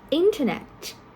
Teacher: So in this kind of case, normally the first syllable of the prefix, we stress on the first syllable of the prefix